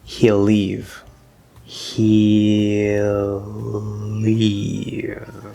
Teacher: so we actually end up just getting a slightly longer l · here we're ending in the l vowel sound and we're starting in the l consonant leave so we actually end up just getting a slightly longer